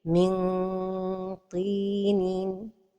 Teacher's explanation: la ghunna est emphatique, même si la lettre ta porte el kasra